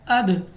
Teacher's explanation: اب یہاں پہ ہمارے پاس الف مدہ، اس کے علاوہ ہمارے پاس یہاں پہ مد ہے، تو ہم نے مد کو دیکھتے ہوئے 3 سے 4 الف تک سیکنڈ تک لمبا کرنا ہے۔ اس کے بعد دال حرف ہمارے پاس حروف قلقلہ میں سے ہیں، تو ہمارے پاس آواز جو ہے وہ واپس نکلتی ہوئی محسوس ہو۔ ہم نے یعنی دو ڈبل آواز کے ساتھ پڑھنا ہے، اد، یعنی ہماری آواز واپس نکلے۔